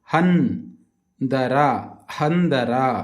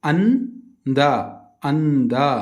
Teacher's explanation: ಸೊನ್ನೆಯನ್ನು ತ ವರ್ಗದ ಅನುನಾಸಿಕ ಅಕ್ಷರ ನ ಎಂದು ಉಚ್ಚರಿಸಬೇಕು